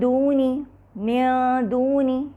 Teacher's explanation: مزید مثال دیکھیے دونی، دونی، یہاں بھی دیکھیے نون کے مخرج کو بغیر چھوئے زبان دال کے مخرج پہ جا رہی ہے لیکن نون کے مخرج سے قریب گزرتے ہوئے، اور اس کو ہم نے دال کو مشددہ بھی نہیں کیا۔ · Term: اخفاء